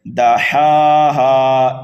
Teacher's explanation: ہا کے اوپر کھڑا زبر ہے اس لیے ایک الف کے برابر کھینچنا ہے، دوسرے ہا کو بھی کھینچنا ہے ایک الف کے برابر۔